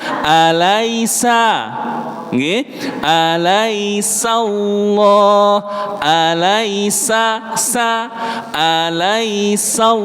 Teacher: Jadi fokusnya Pak Bu, bunyinya bukan so, tapi sa.